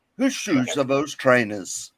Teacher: With the Welsh accent, you gotta say it like you're asking a question.